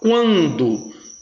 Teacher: semivogal U, vogal nasal AN